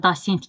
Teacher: Dosentdə dasent kimi tələffüz olunur. Burada da A kimi tələffüz olunur. Deməli A kimi götürə bilərik 4-ü.